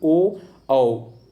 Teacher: कंठ बोलो प्लस ओष्ठ, देखो आपका ओ, आप जब बोलोगे तो आपका होस्ट जो होगा, ओष्ठ जो होगा, देखिए बोलिए कैसे हो रहा है? ओ आओ, कंठ से आवाज़ निकल रही, ओष्ठ भी इसमें आ रहा है